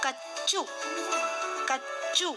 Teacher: यहाँ च का साउंड डबल आ रहा है। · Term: च वत्तक्षरा